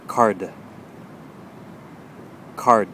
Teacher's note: when you produce the D sound, of course, the tongue is going to touch the top, just briefly, and produce that D sound